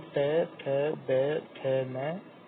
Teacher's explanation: उच्चारण स्थान है दंत